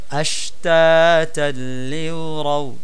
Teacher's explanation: সাকিনের পরে লাম আসছে, লামকে তাসদিদ দিয়ে গুন্না ছাড়া পড়তেছি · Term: ঈদগামে বিলাগুন্না